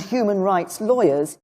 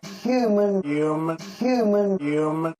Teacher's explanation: in new york accents the h is dropped and we're left with you listen to theresa may pronounce the h in human immigration campaigners